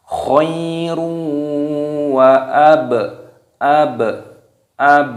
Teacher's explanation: ada dhammah tanwin yang bertemu dengan wawu, hukumnya dibaca idgham bi ghunnah yang sudah kita sampaikan tadi, itu didengungkan, dimasukkan dan didengungkan. Seakan-akan di sini ada tanda tasdidnya.